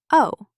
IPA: oʊ